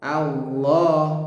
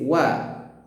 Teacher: Yang tebal itu lafaz Allah a-nya. Allah. Nah, wa-nya tetap tipis. Wa. Jangan dibaca wallahu.